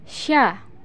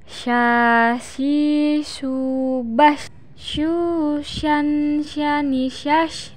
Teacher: lidah dengan langit-langit diucapkan mengalir udaranya dan mengalir pula nafasnya bahkan ketika melafalkannya menyebar nafas dan udaranya yang disebut dengan tafasyi